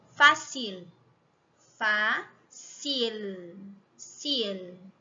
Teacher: a língua toca lá no céu da boca mas não lá atrás ela vai tocar atrás dos dentes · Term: som de L